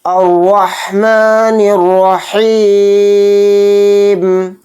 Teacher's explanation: را کے اوپر زبر ہے، را کو یہاں پر موٹا پڑھیں گے اور را کے ساتھ ہا کو ملائیں گے اور ہا کو حلق سے نکال کر اچھے سے پڑھیں گے. پھر نون کو را میں ملائیں گے، نون کو را کے اوپر تشدید ہے تو اس لیے نون کو را میں ملا کر پڑھیں گے.